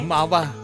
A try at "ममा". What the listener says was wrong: अरे मावा नहीं, ममा बोलिए।